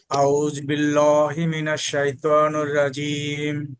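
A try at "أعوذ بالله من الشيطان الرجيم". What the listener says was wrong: কিন্তু আপনি যখন পড়ছেন তখন স্পষ্ট নির হয় নাই। হ্যাঁ, আবার বলেন।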